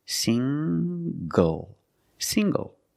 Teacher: The ng makes the nasal sound plus the hard g.